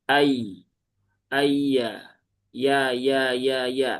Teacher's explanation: Kemudian huruf ya, ya setelahnya itu ada huruf ya tipis ya, huruf ya tipis. Jadi pastikan ya ditipiskan, dia ada di tengah lidah, langit-langit atas